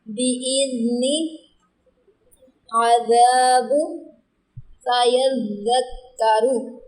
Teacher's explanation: ذال کو زا کے مخرج سے ہم ادا نہیں کریں گے